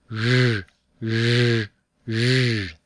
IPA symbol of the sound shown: ʒ